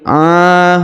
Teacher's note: huruf a dipanjangkan dua harakat karena di atasnya terdapat Alif